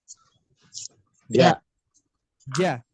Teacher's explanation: Ketika Bapak Ibu sekalian mengucapkan ja, itulah haknya. Hak dibaca ja yang muncul di tengah lidah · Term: huruf ja